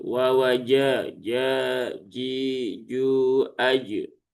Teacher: huruf jim itu sifatnya adalah jahr sehingga ya jimnya bersih dari hembusan udara